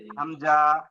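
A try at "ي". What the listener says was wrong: না, হামজা কোথা পাচ্ছেন? নিচে এক নোক দু নোক্তা হলেও কি হয় ওটা? ইয়া।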